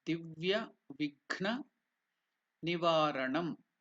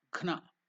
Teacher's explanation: the Gha is the second one, Mahaprana, not the Ga.